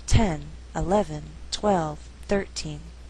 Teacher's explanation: Now when we count, the stress is on the first syllable. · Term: shifting stress